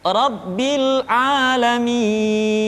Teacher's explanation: Jadi mi dibaca panjang karena kita menemukan huruf sukun.